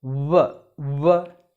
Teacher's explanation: work w h 8e we have to pronounce it as what there should be considerable lip rounding in the case of work